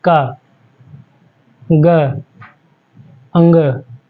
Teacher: अल्प प्राण होता है जिसको बोलने में कम समय लगे जैसे हम लोग बोलते हैं क ग अंग कम समय लगा